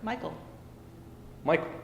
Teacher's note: reverse of an I am um in other words a a a foot in which the uh first syllable is stressed and the second one is unstressed